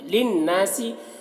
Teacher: نون مشدد ہے غنہ ہوگا اور الف مدہ ہے ایک الف